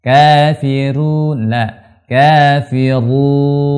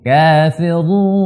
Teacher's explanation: Kafiru, ru, tidak boleh ke hidung. Tebal dan dia mesti tidak ke hidung.